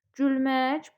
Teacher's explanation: Bax ü də incədir. Ə də incədir. Bu da tabe olar.